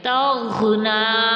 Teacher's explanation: آگے غائن ہمارے پاس ساکن ہے، تاپ متحرک ہے اور غائن ساکن ہے، تو غائن ساکن اپنے سے پہلے والے حرف کی حرکت سے مل کر پڑھا جائے گا، اور غائن میں رگڑ ہوتی ہے، توغ نون پر کھڑا زبر ہے تو 2 کاؤنٹس کھینچیں گے، اور کھڑا زبر وقت کی صورت میں کھڑا زبر ہی رہتا ہے۔